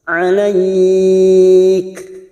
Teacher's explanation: Ujungnya pada huruf kaf ini karena dibaca waqaf maka sifat dari huruf kaf ini terasa, yaitu ada sifat sidda dan sifat hamas.